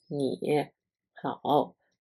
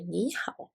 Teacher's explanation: We say 你好 because there is a tone sandy. If two third tone syllables are spoken together as a word, the first third tone word will be pronounced as a second tone